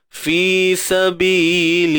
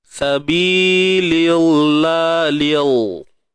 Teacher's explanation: Kalimah Allah ni, dia jadi nipis sebab sebelum dia ada huruf baris bawah.